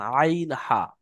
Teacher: হালাকের বা কণ্ঠনালীর মাঝখানে হতে উচ্চারণ হয় আইন হা। অর্থাৎ আমাদের মাঝখান, গোলার মাঝখান, আইন হা।